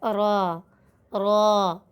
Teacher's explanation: را کو ادا کرنے کے لیے ہماری زبان ہمارے دانتوں کے کناروں کو ٹچ کرتی ہے